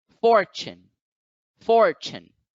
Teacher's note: If you look at the word fortune in the International Phonetic Alphabet, you find that the apostrophe is over the first syllable. So for must be accented while chun does not.